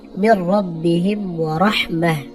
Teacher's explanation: ওয়াকফের সময় গুলতা হা হয়